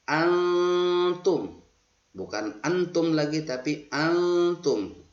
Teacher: Asal bacanya antum karena nun sukun bertemu dengan ta yang ini, maka harus nun sukunnya harus dibaca samar atau ikhfa